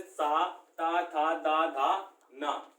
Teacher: सा ता था दा धा ना, ये दांत से उच्चारण होते हैं